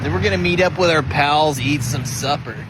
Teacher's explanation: Nothing like a little bit of vocal fry to warm you up. Heavy on the vowels, got a bit of a drawl